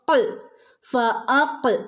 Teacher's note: നാവിന്റെ അങ്ങേ അറ്റം നാവിന്റെ മുരട് ഭാഗത്തുനിന്ന് വരുന്ന അക്ഷരമാണ് കാഫ് അപ്പൊ ഫക്ക് ഈ കാഫിന് സുക്കൂന് വന്നാൽ ഫുൾ സുക്കൂൻ അവിടെ കൊടുക്കണം ട്ടോ